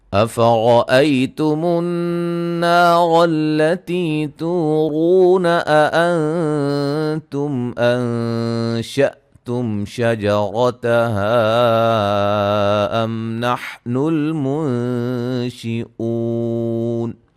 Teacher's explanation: حمزہ کو واضح پڑھیں گے، نرم نہیں پڑھیں گے، تحقیق کے ساتھ پڑھیں گے